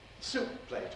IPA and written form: ˈsuːp̚ pleɪt (soup plate)